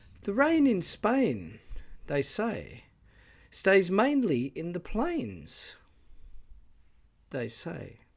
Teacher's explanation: the first projecting Clause is interpolated into the middle of the main projected clause and as is often the case with interpolation this is done so at a lower pitch height · assigns two tone ones in sequence to the projecting clause and the beginning of the projected clause.